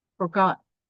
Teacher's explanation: an unstressed syllable followed by a stressed one